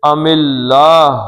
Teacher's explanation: اللہ کا لام پتلا پڑھنا ہے، پیچھے زیر ہے